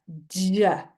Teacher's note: for j, it starts as a d and ends as a j. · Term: affricate